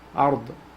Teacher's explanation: So we pronounce it heavy. When ra has a sukun, or when ra is a sakin, the letter before has a fatha, we pronounce it with tafkhim. So heavy. Ard.